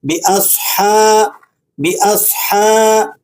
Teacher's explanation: باص، باص، صاد پر سکون ہے تو اسے آپ نے تفخیم کے ساتھ یعنی موٹا کر کے پڑھنا ہے۔ ہا پر فتحہ ہے، ہا کو حلق سے صاف آواز کے ساتھ پڑھیں گے۔ باصحا، باصحا، با پر کسرہ ہے اور آگے یہ لام کے ساتھ مل جائے گی۔